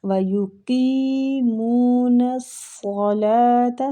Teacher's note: صاد مستعلیہ حروف ہے، اس کو پر پڑھنا ہے